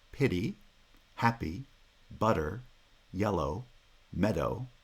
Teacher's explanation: made up of two light syllables the first syllable is strong so it gets stress